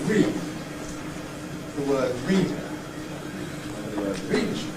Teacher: And the /iː/ of the ‘read’ has to contract in order to make space for the unstressed vowels to come. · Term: Rhythmic Clipping